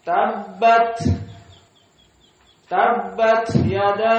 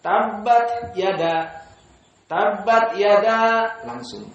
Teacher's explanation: Maka jika antum dengar para qurra, di saat membaca ta sakinah, dikeluarkan hawa.